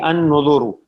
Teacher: اب را جو ہے اس پہ پیش ہے, اگر وقف نہ کریں تو را موٹا ہوگا, اور اگر وقف کریں گے تب بھی موٹا ہوگا کیونکہ اس سے پہلے پیش ہے